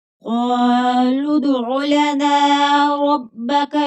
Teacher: قاف حرف مستعلیہ ہے، پور پڑھیں گے ، لدعو، دال حروف قلقلہ ہے تو یہاں پر قلقلہ ہوگا،